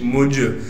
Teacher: جیم پر قلقلہ کریں گے کیونکہ قلقلہ حروف میں سے ہے اور جیم ساکن ہے